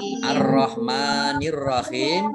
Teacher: Alif lamnya tidak dibaca, maka ini alif lam syamsiyah. Langsung masuk ke huruf berikutnya yaitu ro, ditandai dengan ada ro tasdid.